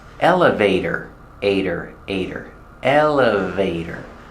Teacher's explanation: And the T is pronounced as a fast D.